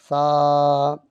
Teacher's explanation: سا کو جو ہے نرم پڑھتے ہیں بالکل، اس کے اندر سیٹی کی آواز نہیں آتی